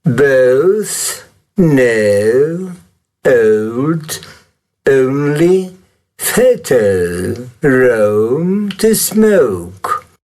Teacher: Ci sono alcune persone inglesi che si credono molto sofisticate che questo suono che noi rappresentiamo foneticamente con la OU, loro lo rappresentano e lo pronunciano con un suono neutro e una U